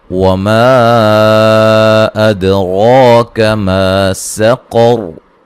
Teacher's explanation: दाल पर कलकला करेंगे और रा को मोटा अदा करेंगे